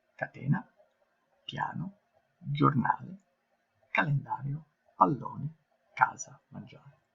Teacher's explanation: le parole piane, dove l'accento tonico cade sulla penultima sillaba